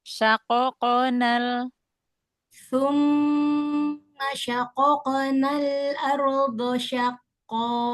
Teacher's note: Nah, tebalkan lagi ya qaf qalqalanya.